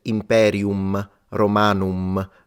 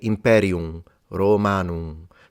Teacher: it's the nasalization of the vowel before the M it's exactly how they did it in ancient Rome